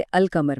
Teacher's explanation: कमरी हरूफ जिनके साथ लाम की आवाज बिल्कुल साफ अदा की जाती है